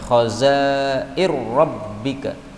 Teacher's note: khazainu rabbika, nunnya bisa dihilangkan, khazair rabbika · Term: idgham